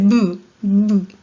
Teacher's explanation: Tus labios se unen, se cierra tu cavidad oral.